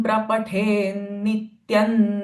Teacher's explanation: Now here there is a anuswara followed by the sound. So anuswara sound will become n, not m.